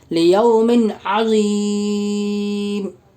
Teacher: میم کے نیچے 2 زیر کی تنوین ہے، 2 زیر کی تنوین کے بعد حروف حلقی کے 6 حرفوں میں سے عین ہے، اس لیے 2 زیر کی تنوین کا عین میں اظہار کا حلقی ہوگا، یعنی بغیر غنہ اور اخفاء کے